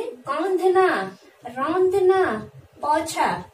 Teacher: उच्चारण किसका करते हैं? अनुनासिक का, यानी मुख और नाक से उसकी ध्वनि निकालते हैं।